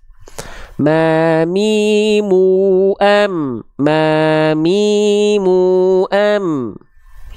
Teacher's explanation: banyak di antara kita yang melafalkan huruf mim itu keliru kelirunya Apa karena bibirnya terlalu dilipat